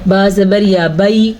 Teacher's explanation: या साकिन से पहले ज़बर है तो या लीन है